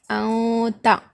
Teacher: یہاں پر نون ظاہر نہیں ہو رہا ہے